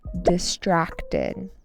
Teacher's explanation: Distracted with an emphasis on the second syllable.